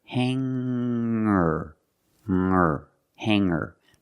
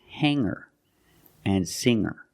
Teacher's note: And I can change sing to singer. When I change these words with er, I don't pronounce the g sound. It's just the nasal